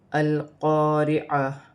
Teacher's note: را کو بھی باریک پڑھا جائے گا، عین کو اپنے مخرج سے ادا کیا جائے گا۔ تا پر پیش کی حرکت ہے، واو کی صورت میں پیش گر جائے گی اور تا ہاں میں بدل جائے گی، جیسے القارعہ۔